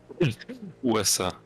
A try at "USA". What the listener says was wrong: USA. It's not USA because if you pronounce it USA, then you pronounce it as a one word instead of like singular letters. So it's USA. It's like you pronounce every letter on its own.